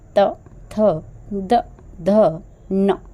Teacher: जो उच्चारण स्थान है वह है दंत दंत यानी कि दांत जब हम इन पांच अक्षरों का उच्चारण करते हैं तो जो हमारा जीभ है व हमारे दांत को क्या कर रहा है टच कर रहा है छू रहा है स्पर्श कर रहा है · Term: त वर्ग